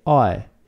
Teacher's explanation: In English you say I, and the transition between A and I is smooth. Is very smooth, and that's why it's called a diphthong.